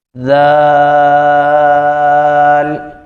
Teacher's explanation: اسی طرح آگے ذال، اور اس کو ادا کرتے ہوئے سیٹی کی آواز نہیں آئے گی، بالکل اس کو نرمی کے ساتھ پڑھیں گے، بالکل نرمی کے ساتھ. ذال، یعنی زبان کی جو نوک ہے وہ اوپر کے دانتوں کی شروع میں لگے گی تو پھر یہ بالکل نرمی کے ساتھ جو ہے وہ ادا ہوں گے.